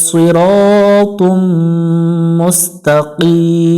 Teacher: মিমের উপরে তাসদি আছে গুন্না করে নিব